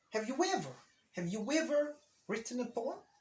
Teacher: when talking in the present perfect, the A sounds in have or has is not usually pronounced strongly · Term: weak form